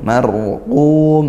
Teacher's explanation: rnya sukun didahului fathah dibaca tafkhim tebal